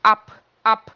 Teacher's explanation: E eu vou falar o B com som de P mesmo. Ab, ab. O B no final das palavras fica com som de P. · O B no final das palavras fica com som de P. Quando ele está sozinho lá.